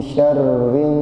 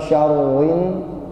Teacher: Ro-nya dibaca syarrin bukan syarwin, karena ro-nya berharokat kasroh, ya. Tipis.